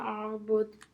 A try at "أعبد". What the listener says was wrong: Okay, but the hamza just needs to be a bit clear. أعبد.